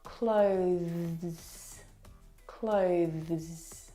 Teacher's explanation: the th sound is very very soft it is definitely still there it needs to sound different from the verb clothes okay which